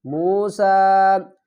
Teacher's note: وَإِذْ قَالَ موسیٰ یا کو نہیں پڑھیں گے، سین کو سیٹی کے ساتھ ادا کریں گے